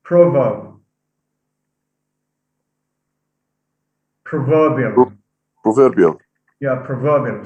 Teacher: so stress is shifted from the first to the second